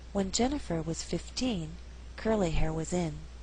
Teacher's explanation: Here we did not stress hair. Here 15 is at the end of a phrase, so the second syllable is stressed.